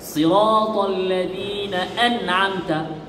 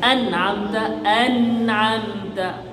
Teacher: আওয়াজ সামান্য জারি, সামান্য গুন্না আছে, গুন্নার তৃতীয় স্তরের তৃতীয় মাত্রার গুন্না। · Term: গুন্নার 3য় স্তর